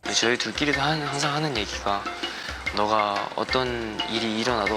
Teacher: What he's doing is he doesn't pronounce his words strongly. Everything is softened, so it's not that he's slurring his speech, just that he pronounces his syllables with less force. · He's adding that extra soft breathing into his speaking.